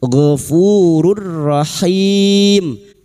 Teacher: Nun sukun atau tanwin yang bertemu dengan 2 huruf ini, huruf lam dan huruf ra, idgham bila guna, masuk tanpa mendengung, masuk pada huruf ra tanpa mendengung.